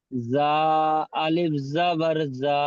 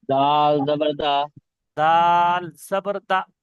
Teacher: যা টান দিচ্ছি আর দাল একদম টান দিচ্ছি না, বিনা টানে।